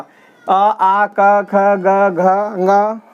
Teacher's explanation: अ, आ, क, ख, ग, घ, ङ और विसर्ग, इसका उच्चारण स्थान हो जाएगा कंठ